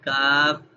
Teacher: جب ہم نے کاف پڑھا تھا تو نرمی سے زبان پیچھے ٹچ ہوئی اور اس کو ہم نے آرام سے نرمی سے پڑھ لیا کاف.